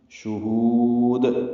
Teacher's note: دال ساکن پہ قلقلہ ہے